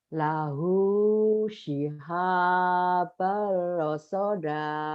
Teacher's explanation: idgham bila gunnah, enggak ditahan